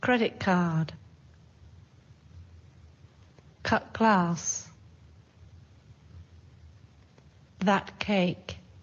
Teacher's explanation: Sometimes the t sounds more like k.